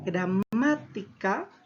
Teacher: tiene la mayor fuerza de voz en la antepenúltima sílaba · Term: palabra esdrújula